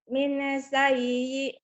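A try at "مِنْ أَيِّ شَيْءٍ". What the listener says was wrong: Min ayyi. Bukan min sayyi. Min ayyi.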